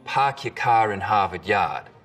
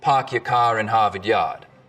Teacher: in Boston it's usually pretty fronted park your car in Harvard Yard in Rhode Island it's back · We call this the start vowel. In Boston, it's usually pretty fronted.